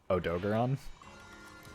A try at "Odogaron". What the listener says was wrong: That's just wrong. Those are just all the wrong vowels. But this is Odogaron.